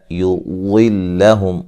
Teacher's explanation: یضلہم ضاد کو موٹا ادا کریں گے